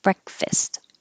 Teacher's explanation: it looks like fast but it's not stressed so it changes to fist